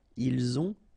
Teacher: final T not pronounced, and then we make the liaison